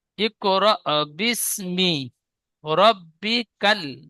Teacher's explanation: এখানে ইকরা বিস্মিকা বলেছেন, ইকরা হবে না, র হামজা জাবার র, হামজার উপরে সাকিন থাকলে একটু ঝাটকা বা ধাক্কা দিয়ে পড়তে হয়। তো র হামজা বা র, এখানে ঝাটকা দিয়ে পড়বেন।